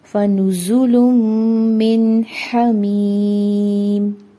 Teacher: तो यहाँ पर नून साकिन एंड नून तनवीन का रूल ऑफ इदगाम विद गुन्ना अप्लाई करेंगे। ठीक है, दोनों हुरूफ को आपस में अच्छे से मर्ज करेंगे और गुन्ना करते हुए अदा करेंगे · फा के ऊपर एक हरकत है, नून के ऊपर एक हरकत है और जा के ऊपर एक हरकत है। इनको हमने लंबा नहीं करना। जा विस्लिंग लेटर है, इसकी विसल को हमने प्रोमिनेंट करना है।